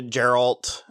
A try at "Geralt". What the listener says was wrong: it's a hard G. It's Geralt.